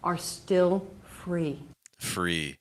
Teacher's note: notice that even on the word free, we also have a pretty light R sound.